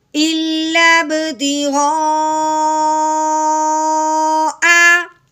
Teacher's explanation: مد متصل، یعنی مد کے ساتھ ہی حمزہ ملا ہوا ہے، جس کی وجہ سے اب ہم نے مد کو 4 الف کے برابر لمبا کرنا ہے